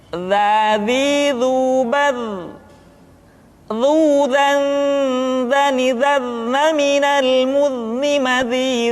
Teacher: diucapkan dengan menyentuhkan ujung lidah dengan dinding dua gigi seri bagian atas seperti kita mengucapkan huruf tha. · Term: huruf dza